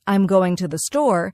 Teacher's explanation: the stress naturally falls on going and store. The smaller words like I'm and to the R less emphasized and spoken quickly. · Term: stress pattern